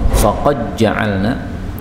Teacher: ini dal ketemu jim boleh idgham